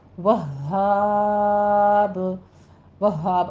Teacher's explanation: الف مدہ کے بعد جب ہم وقف کر رہے ہیں تو مد عارض وقفی پیدا ہو رہی ہے اور با ساکن ہو رہا ہے، تو مد عارض کو ہم 6 کاؤنٹ کر لیں گے اور با کے اوپر قلقلہ کر دیں گے